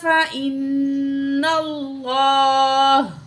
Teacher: تو یہاں نون تشدید ہے، نون تشدید میں غنہ کر کے پڑھتے ہیں، ٹھیک ہے. نون تشدید اور میم تشدید میں ہمیشہ غنہ ہوگا، تو نون کے زبر کو لام تشدید سے ملا کے پڑھیں گے.